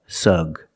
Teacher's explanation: the first syllable is the short uh sound like cup and up